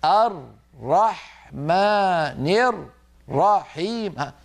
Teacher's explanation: الراء المشددة فك الإدغام، صار كل راء لوحدها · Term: تمطيط الشد